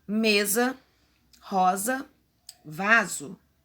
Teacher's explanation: esse S tem que ter o sonzinho de Z